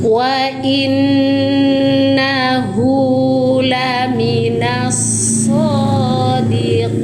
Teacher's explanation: nun bertasydid ya, hukumnya gunnah musyaddada atau wajibul gunnah. Tahan dengungnya 3 ketukan sempurna. Wa inna hu, ini namanya mad silah qasirah ya, hak dhamir berharokat dhammah terbalik, panjangkan 2 ketukan, mad silah qasirah.